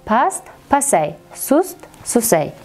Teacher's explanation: Keyingi beshinchi holati past, sust so'zlariga ay qo'shimchasini qo'shganimizda ushbu so'zlar tarkibidagi t tovushi tushishi kuzatiladi